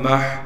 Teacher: ہا کو صاف کر کے گلے سے نکالیں گے